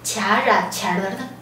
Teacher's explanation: 拉长变弱，带一个卷舌的颤音的韵尾 · 这里的机字卡本身是二声，是最上扬的声调，所以呢，它不会改变声调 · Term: 二声不变